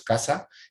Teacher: estamos utilizando este elemento dentoalveolar fricativo sordo